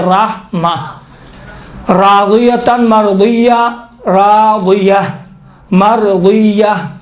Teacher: وہ تو اگر آخر کلمہ میں اس طرح سے تا گرد ہو، اس کے اوپر دو زبر ہو، تو وقف کے دوران اس تا کو تبدیل کرتے ہیں کس میں؟ ہا میں، ہا سخت میں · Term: وقف ابدال